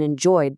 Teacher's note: And enjoyed gets the voiced D sound.